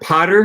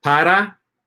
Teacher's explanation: the flapped T in English is pronounced basically exactly like an R in Spanish, right? So you take the word like Harry Potter, yeah, if you take the word Potter and just change the last R to an A, para, that's how they pronounce the word para, for, right?